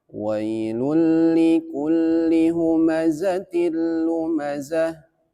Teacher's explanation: lul masuk tapi tidak dengung berarti namanya idgham bila gunah